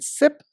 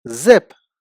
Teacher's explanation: You have the s sound in sip, so s is an unvoiced consonant, and the z sound in zip, so that means z is a voiced consonant.